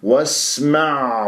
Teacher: يجري فيها الصوت ويجري فيها النفس والعين ساكنه